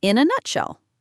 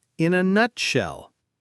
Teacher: the emphasis is on nut